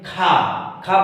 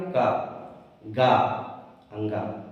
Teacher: जैसे हम मान लीजिए खा, खा बोल रहे हैं ना, मतलब इसमें ज्यादा ऊष्मा भी निकल रही है, ज्यादा श्वास की जरूरत पड़ रही है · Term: महाप्राण